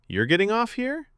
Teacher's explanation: With rising pitch at the end. That rise signaled a question, not a command.